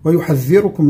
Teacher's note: الذال فيها إخراج لسان